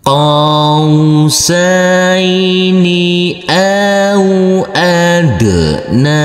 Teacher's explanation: Huruf qaf yang berfathah a ini bertemu dengan huruf waw sukun harus kita lembutkan karena ini adalah bacaan lain.